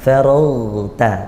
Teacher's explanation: Faragta, cukup suaranya yang ngalir, tidak mengalirkan nafas. Faragta. Kalau kita alirkan nafas maka seperti kha. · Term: ghain